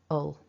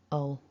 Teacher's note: And the final syllable, we've got a schwa, so that weak vowel, and then another dark L